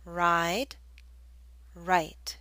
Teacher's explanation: The I in ride should be longer because the D is a voiced consonant.